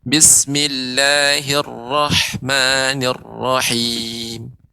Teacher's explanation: huruf ra, Bapak, ini lebih dilembutkan lagi dan getarannya dikurangi ya